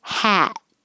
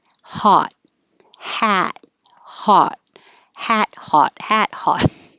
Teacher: and the main difference between hat and hot is the lips the lips are pulled back for the ah